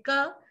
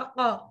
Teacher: قاف کہتے ہیں کوے کے متصل زبان کی جڑ جب اوپر تالو سے ٹکرائے